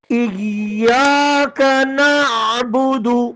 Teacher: ایاک نعبد، یا پر زور لگا کے شد ہے